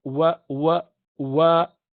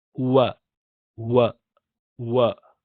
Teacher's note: pronounced by rounding your lips this is w sound in English it's not V sound